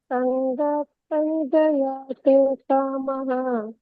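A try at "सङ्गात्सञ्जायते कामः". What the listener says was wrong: ಸಂಜಾಯತೆ ದೀರ್ಘ ಇದೆ ಸಂಜಾಯತೆ ಕಾಮಹ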